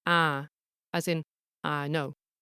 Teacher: the North Yorkshire I is closer to ah, as in I know.